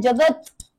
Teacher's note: तचा उच्चार पूर्ण नाही कारण तो हलांत आहे